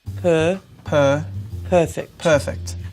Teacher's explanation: that's the strong er and what i mean by strong is it's in the accented syllable of the word